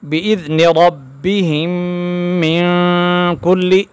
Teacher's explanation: بِإِذْنِ رَبِّهِم من کل، اس نون پر غنہ ہوگا، من کے نون پر غنہ ہو کریں گے، ہم ناک میں آواز لے جائیں گے